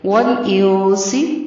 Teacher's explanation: والانسی، ول واو کو لام کے ساتھ ملانا ہے. نون ساکن ہے، نون پر اخفا ہوگا · جنی نون پر غنہ ہوگا لیکن نون کو لمبا نہیں کیجیے گا. والانسی، ول واو کو لام کے ساتھ ملانا ہے